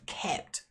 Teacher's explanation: We've got that consonant cluster at the end of kept, the P and the T together, which some students find quite difficult.